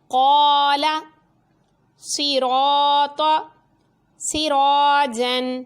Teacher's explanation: الف سے پہلے پر حرف ہے تو الف پر پڑھا گیا